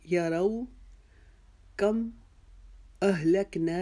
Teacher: دو آنکھوں والی ہا کی آواز حلق کے نیچے سے نکالیں گے